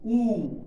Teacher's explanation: ऊ हमने बोला तो हमारे जो मुख की आकृति है वो कैसी हो गई, गोलाकार हो गई या वृत्ताकार हो गई। तो वो होते हैं वृत्ताकार या गोलाकार स्वर।